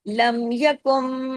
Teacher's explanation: अब यकुम में नून साकिन के बाद मीम आ गया। तो इदगाम हो गया।